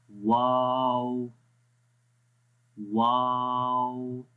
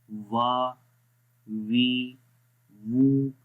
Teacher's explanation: ایک چیز نوٹ کریں اس امیج کے اندر کہ جو تو بیک سائڈ ہے ٹانگ کی تھوڑی سی اوپر کی طرف جائے گی، ٹھیک ہے، آگے سے نیچے ہوگی اور پیچھے سے اوپر جائے گی تھوڑی سی، اور وا پڑھیں گے، ہونٹوں کو گول کر کے ان کو آپس میں ملانا نہیں ہے، واو، لیکن زبان کی بیک سائڈ تھوڑی سی اوپر کی طرف اٹھے گی، ٹھیک ہے۔